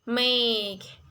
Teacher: make is actually a double vowel or diphthong